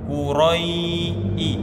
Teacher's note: maka bunyi ya sukunnya itu terbunyi i, ya, bukan e. Quraisy atau Quraisy samar-samar, ya, tapi harus bunyi i. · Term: mad lin